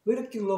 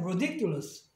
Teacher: 그럼 마지막 음절 앞에 모음이 있으니까 액센트가 이제 일로 가요. 그러면 얘가 더 이상 아까처럼 명사형에서 단모음이 아니고 이제 쉬어 사운드니까 리가 아니라 르로 바뀌어요. 아까는 이 D도 플랩 사운드에서 명사일 때는 그러니까 리을처럼 발음하지만 이제는 액센트가 생기니까 다시 D 발음하는 거예요.